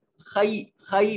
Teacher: یا ساکن ما قبل مفتوح، یہاں یائے لین ہے، اس کو مجہول نہیں، خے نہیں پڑھیں گے، خی، خی پڑھیں گے